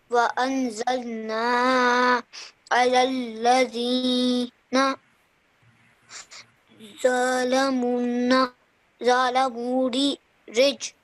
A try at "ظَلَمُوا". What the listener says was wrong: Okay, just stretch the mu out for 2 seconds because of the vowel madda. ظلموا.